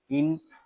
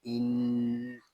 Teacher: یہاں نون مشدد ہے اور اس کو غننے کے ساتھ ادا کریں گے کیونکہ نون مشدد میں ہمیشہ غنہ ہوتا ہے۔ اس کو ان اس طرح نہیں پڑھیں گے، اس کو پڑھیں گے ان۔